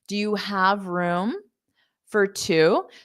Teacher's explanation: Now, have you will hear louder because it is the main verb.